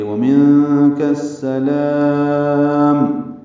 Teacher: یہاں پہ جب وقف کر رہے ہیں تو لام کو لمبا کریں گے ، ومنک السلام، یہ وقفاً مد عارض سکون بن گئی ہے،